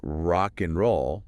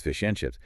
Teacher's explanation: >> The most common one is probably the D sound in and we almost never say the D unless we're really emphasizing the word · >> So rock and roll becomes >> rock and roll >> or fish and chips is fish and chips. The D just vanishes. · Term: elision